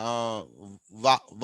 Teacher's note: వా అన్నప్పుడు కింది పెదవి పైన డెంటల్ తాకుతూ ఉంటుంది, అందుకే లేబియో డెంటల్ అంటాం